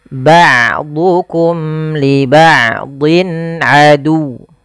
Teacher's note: Wa qulna bitu ba'dukum, hati-hati dalam hafal ain, jangan ba'dukum, jangan diganti dengan hamzah, jangan ba'dukum, tapi dia ain. Ain memiliki salah satu sifat yaitu sifat bainiyah, yaitu tidak terlalu ditahan suaranya dan tidak terlalu dialirkan, tapi tengah-tengah.